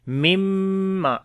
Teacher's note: After the noon sakin the next is meme. We make idgham with gunna. Like this noon we merge into meme, so that's then it becomes idgham, and then we make gunna as well.